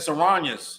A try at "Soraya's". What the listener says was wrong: There's no N in there. SYRO. YA. Soraya's.